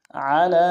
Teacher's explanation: عین کو گہرائی سے ادا کریں گے، لام کے اوپر کھڑا زبر ہے، ایک مقدار میں کھینچیں گے.